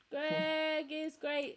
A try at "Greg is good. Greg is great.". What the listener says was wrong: Close enough. You've got the lyrics right. It's the tone that it was a bit different.